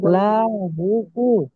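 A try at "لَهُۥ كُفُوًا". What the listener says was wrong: লা টানছেন কেন লাহু আপনি যদি লাহু লা বলে টানে টানেন তাহলে ভুল হবে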